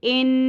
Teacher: نون مشدد پر غنہ ہوگا، ساؤنڈ کو ہم نے ناک میں ہولڈ کر کے رکھنا ہے